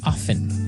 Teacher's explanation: They kind of leave out the strong t sound